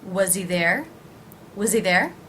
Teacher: I'm actually going to almost think of the Z sound as beginning a word Z. Z, there.